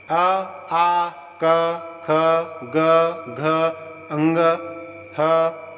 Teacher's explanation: अ आ क ख ग घ अंग ह और विसर्ग का उच्चारण स्थान कंठ है। इन वर्णों के उच्चारण में जिह्वा कंठ को स्पर्श करती है और कंठ से बोले जाने के कारण इन्हें कंठ कहा जाता है।